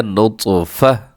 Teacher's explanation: تا کو ہم نے پھر ہا سے بدل دینا ہے